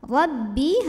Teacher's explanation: Ra dibunyikan secara tafkhim karena barisnya di atas, maka bacanya tebal. Rabbi, hati-hati baknya jangan kemasukan hidung ya.